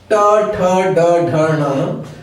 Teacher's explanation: तो तालु जो खुरदुरा हिस्सा है, खुरदुरा भाग है, उसके ठीक ऊपर चिकना हिस्सा जो होता है वह मूर्धा कहलाता है। जब हम ट बोलते हैं तो हमारी जीभ जहां मुड़कर टच होती है वही हिस्सा मूर्धा है, वहीं हवा टकराती है, स्पर्श करती है और बाहर निकलती है। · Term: ट वर्ग